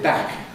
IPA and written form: bækʰ (back)